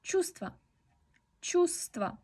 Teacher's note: no pronunciamos la V